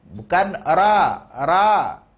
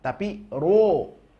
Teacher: huruf tebal bunyi vokalnya adalah huruf o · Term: ro tebal